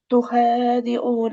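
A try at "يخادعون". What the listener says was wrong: अच्छा, ये यखदाऊन है ना, ता नहीं है, ये ता होती तो यहाँ होती। ये या है, ये भी क्या है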